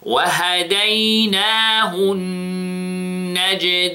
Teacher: Notice we have 2 seconds in the noon, and this is حرف غنّة مشدد.